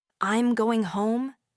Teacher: Your voice starts higher and drops down at the end. For instance, if you say, "I'm going home," your voice falls at the end, sounding definitive. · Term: falling intonation